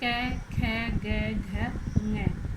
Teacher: ए आ कै वर्ग है तथा विसर्ग का उच्चारण स्थान कंठ है। इन वर्णों के उच्चारण में जिह्वा कंठ को स्पर्श करती है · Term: कंठ्य वर्ण